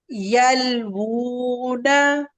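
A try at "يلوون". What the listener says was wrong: वूना ये थोड़ा सा ज्यादा हो गया। यल वूना, बस इतना सा।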